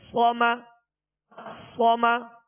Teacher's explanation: صاد زبر صا، میم زبر ما، صما صما. صاد کو پر پڑھیں گے اور اس میں سیٹی کی آواز پیدا ہوگی